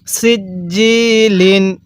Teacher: সিনটা চিকন করে জিমটা শক্ত করে উচ্চারণ করব